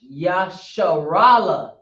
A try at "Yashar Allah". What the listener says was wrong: Yashar Allah. When we say it sounds like Yasharala. But it's Yashar Allah. This is by itself, Yah.